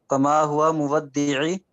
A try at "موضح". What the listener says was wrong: No, this is ha. It's ha.